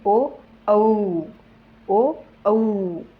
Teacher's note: पश्च म्हणजे काय जिभेच्या सर्वात मागच्या भागावर याच व्हायब्रेशन होत असतं